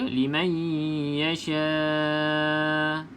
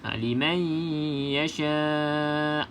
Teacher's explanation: Walaupun hamzah ni kita matikan, kena bunyikan huruf hamzah tersebut. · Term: hamzah yang sukun